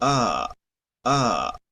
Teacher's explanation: esta es la a media abierta · A, A, De esta parte, esto es nuestra boca en el diagrama, esta es la parte de abajo, significa que aquí cuando hacemos A, A, la lengua hacia acá, A, estamos sacando la A del español, que es esta. Esta A es más hacia el centro. Entonces lo que debemos de hacer es como enrollar un poquito hacia atrás la lengua